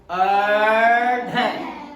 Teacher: जैसे आप बोलो अढ़, तो जो हमारी जीवा है ना, ये फोल्ड होके फिर बिल्कुल सीधी होती है, इस वजह से इन दोनों को उत्क्षिप्त वर्ण बोला जाता है।